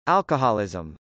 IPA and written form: ˈælkəhˌɔlˌɪzəm (alcoholism)